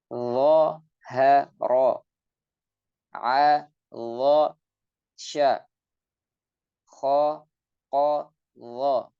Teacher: Huruf lo ini terucap dari ujung lidah bertemu dengan ujung gigi seri atas. Jadi ini ujung sama ujung ya.